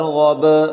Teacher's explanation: غین کو موٹا کر کے با کے ساتھ ملائیں، با پر قلقلہ کریں